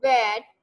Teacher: आप देखिएगा कि जब आप ये साउंड प्रोड्यूस करेंगे फ एंड व, you will come टू know कि आपके जो लोअर लिप है वो आपके ऊपर के दांत के साथ टच हो रहा है, तो फिर जाके ये साउंड प्रोड्यूस होती है। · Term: लेबियोडेंटल्स